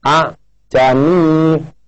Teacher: Kemudian yang kedua dimatikan, maka hamzah yang kedua atau alif disuarakan antara hamzah dan alif atau samar-samar. Ini yang dimaksud dengan tashil.